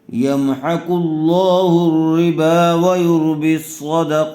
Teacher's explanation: صاد کو پر کیجیے قاف کو پر کیجیے